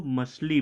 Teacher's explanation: कभी कभी हम लोग छ को श बोल देते हैं